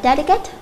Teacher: delicate trọng âm rơi vào âm thứ nhất